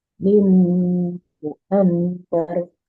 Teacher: Jadi mimmu dengung 2 harokat karena idgham bi gunnah.